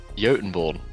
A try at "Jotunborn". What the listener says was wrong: Jotun? I'm pretty sure the J is not silent. Am I wrong on that?